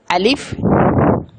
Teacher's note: میرے دوست اور بزرگوں، حروف مفردات کی تختی نمبر 1 کے اندر سب سے پہلے الف ہے کہ یہ الف جو ہے وہ جوف دہن سے ادا ہوتا ہے، یعنی منہ کے خالی حصہ سے۔ الف کا مخرج کوئی نہیں ہے، یہ حروف ہوائیہ میں سے ہے کہ یہ الف ہوا میں ادا ہوتا ہے